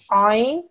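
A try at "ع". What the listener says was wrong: From the middle of your throat, try and make it a little bit heavier. Ein.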